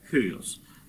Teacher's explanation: А если слово начинается с дифтонга, ну, например, вот слово «хюйос», то знак придыхания, обратите внимание, стоит не над первой, но над второй гласной дифтонга. Дифтонг в греческом языке воспринимается как один слог, как некое единое целое. И поэтому, в общем-то, можно сказать, что знак придыхания стоит над дифтонгом, а не просто над второй гласной.